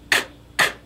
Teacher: Back of the tongue, touching the very back of the hard palate.